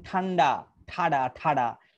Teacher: উপরে মূর্ধা থেকে উচ্চারিত হচ্ছে আপনি যখন বলেন ঠান্ডা ঠাডা ঠাডা এই ঠাডা বলার সময় দেখবেন জিবা উল্টে যাচ্ছে উল্টে উপরে যে অংশকে আঘাত করে হচ্ছে ওইটার নাম হচ্ছে মূর্ধা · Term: মূর্ধন্য বর্ণ